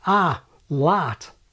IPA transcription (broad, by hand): a, lat